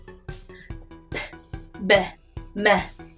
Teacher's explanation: 이 소리들은요 모두 공통적으로 입술을 붙였다가 떼면서 나는 소리인데요